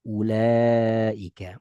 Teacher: Ketika wau kita anggap enggak ada, maka u-nya jadi pendek.